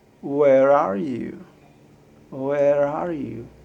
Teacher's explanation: instead of saying where are you what i will do is i will link with an r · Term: linking R